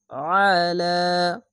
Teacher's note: আইনটিকে মোটা করে গলা চিপে পড়বেন।